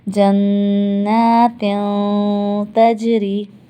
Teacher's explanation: اور غنہ کیسا ہوا؟ باریک، کیونکہ تا ہے، تا حروف استفعال ہے.